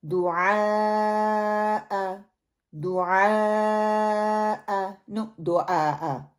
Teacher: عین جو ہے یہ حلق کے درمیان والے حصے سے نکلتا ہے. یعنی کہ زبان پیچھے حلق کی طرف نرمی سے لے جانے کی وجہ سے ہم اس کو حلق کو گلے میں سے اس کو پیچھے کی طرف لے کے جاتے ہیں، جس کی وجہ سے عین جو ہے وہ پروناؤنس ہوتا ہے.